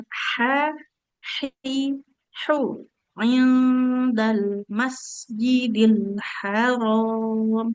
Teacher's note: Masjidil Haram. Nah, huruf H-nya di di tengah-tengah tenggorokan